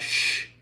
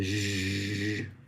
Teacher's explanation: that sh is unvoiced. But when you start to hum, when you sh, it turns into that ZH sound